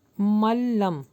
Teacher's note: ملم یہاں پہ نون اسکپ ہوگا، میم لام سے ملے گا